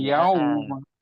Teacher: Kadang-kadang terkesan kayak mat gitu, kayak dipanjangkan, namun bukan mat karena lenturnya dia mengayun. Jadi dia seolah Yau, terayun suaranya. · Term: lin